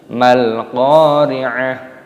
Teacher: Qafnya dibaca panjang, ada tanda alifnya matobi'i, dipanjangkan 2 ketukan